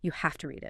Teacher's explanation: it's not have with this V sound, but half. It explains this is just a different way of speaking very quickly.